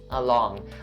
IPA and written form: əˈlɔːŋ (along)